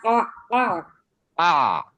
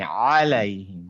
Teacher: এটার মাখারিজ পয়েন্ট হচ্ছে আপনার থ্রোটের মিডিল থেকে, মানে ওই যে যেখান থেকে হা উচ্চারণ হলো হ্যাঁ, মাঝখানে এইখান এই থেকে, এই হাঁটা, মাঝখানে। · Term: আইন